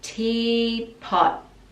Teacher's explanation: And pot, the last T, we just pause the tongue at the top.